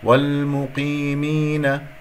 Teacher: قاف مفخمة مرتبة أخيرة